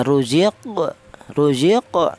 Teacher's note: Itu namanya qalqalah itu artinya ada suara pantulan.